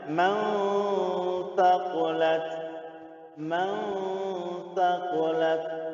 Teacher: disamarkan langsung ke huruf setelahnya. Man taqulat.